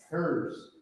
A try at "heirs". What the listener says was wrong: He said hers. Yeah. Say that again from the top.